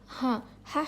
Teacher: ہا حلق کے نیچے والے حصے سے ادا ہوتا ہے.